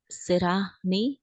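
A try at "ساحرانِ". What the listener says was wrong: سحرانی، تھوڑا سا کھینچو،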